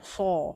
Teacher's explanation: dia isti'la, pangkal lidah terangkat, tengah lidah pun terangkat itbaq sebab dia punya mahras tu hujung lidah di gigi. Jadinya dia berada di macam jambatan tau.